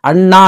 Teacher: ಇದು ಣ ವ್ಯಂಜನಾಕ್ಷರ ಇದು ಆ ಸ್ವರ ಅ ದೀರ್ಘ ಸ್ವರ ಓಕೆ ರೀ ಈ ಅಣ್ಣ ಅಂತ ಅಂದಾಗ ಇದು ಅ ಜಾಸ್ತಿ ಹೊತ್ತು ಎಳೆದು ಹೇಳ್ತೀರಿ ನೀವು ಅದಕ್ಕಾಗಿನೇ ಇದನ್ನ ಪ್ಲುತಾ ಸ್ವರ ಅಂತ ಕರೀತಾರೆ ಎಲ್ಲಾ ದೀರ್ಘ ಸ್ವರಗಳು ಪ್ಲುತಾ ಸ್ವರ